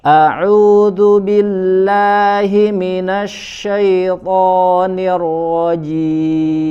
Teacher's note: huruf tho dibaca tebal ya